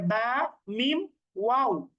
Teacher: ওয়াও এর উচ্চারণটা করার সময় মুখটা গোল করতে হয়